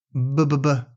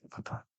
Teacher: Same mouth position, different voicing. Again, b is voiced and p is not voiced.